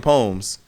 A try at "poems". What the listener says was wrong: Don't say Don't say the E. Don't say The E. Poems. Don't say the E.